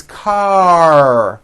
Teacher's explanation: your tongue has to pull back car and also your lips close a little bit in the front the r needs to be very strong and you need to close the word car let's practice these